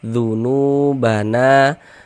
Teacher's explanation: Sebelum waw sukun ada ini nih, ada harokat dhammah nih, maka huruf yang memiliki harokat dhammah ini kita baca panjang. Sehingga nu kita baca panjang, mad tabi'i panjang 2 harokat. Dzunubana, na dibaca panjang.